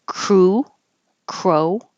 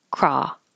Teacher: crew rounded Crow rounded craw not rounded lips